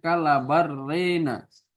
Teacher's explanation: Ya ketika seseorang membaca dengan harokat antara harokat fathah dan kasro, dia lebih condong kepada kasro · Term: imalah